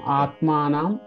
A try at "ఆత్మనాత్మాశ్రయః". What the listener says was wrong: ఇక్కడ దీర్ఘం తీసారు ఇక్కడ దీర్ఘం తీసారు ఆత్మనా ఆత్మాశ్రయ